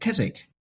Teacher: And the reason that one is Chiswick and the other is Keswick is that Chiswick is the classic English change from k to ch. And in the north, thanks to the Vikings and bringing the Scandinavian pronunciation, cheese stayed with a hard K sound